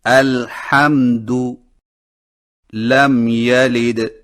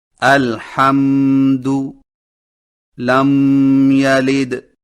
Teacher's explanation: ہونٹوں کے خشک حصوں کو مضبوطی سے بند کر کے میم کو نہایت صاف اور واضح کر کے بغیر غنہ کے پڑھیں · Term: اظہار شفوی